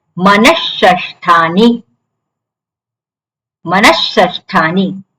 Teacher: વિસર્ગ પછી સકાર આવે જે સકાર હોય એવો સકાર થઈ જાય વિસર્ગનું